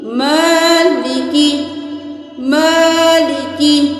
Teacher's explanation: میم کو تھوڑا سا کھینچنا ہے کیونکہ اوپر کھڑی زبر ہے. ان دونوں کے اوپر صرف حرکت ہے، لام زیر لی، کاف زیر کی، لی کی.